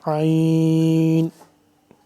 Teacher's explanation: آئین کو گلے سے سختی سے نکالیں گے